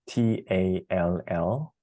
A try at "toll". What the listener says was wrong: So that would be tall, and this would be toll. So I guess kind of, can you watch my mouth? Here's tall, and here's toll. Like even the word, how about the word told? I told you how to say that word, told. And then kind of pull off the D, toll,